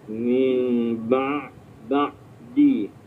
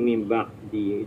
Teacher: Menekan suara ke tengah halkum kerongkong, di mana dinding halkum yang merupakan tempat laluan suara akan disempitkan. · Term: huruf ain